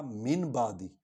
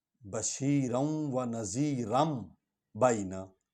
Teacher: جیسے ارسلہ بالحق بشیرم و نذیرم بائنا، وہ بائنا کی وجہ سے، بے کی وجہ سے اب نذیرم پڑھ رہے ہیں. رے کے اوپر 2 زبریں ہیں، رن پڑھنا چاہیے لیکن ہم رم پڑھ رہے ہیں اس لیے کہ آگے با آ گیا ہے